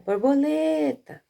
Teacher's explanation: Qual é a sílaba mais forte? É a sílaba lê.